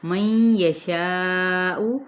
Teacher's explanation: 4 حرکت کہتے ہوئے حمزہ کی پیش کو واضح کریں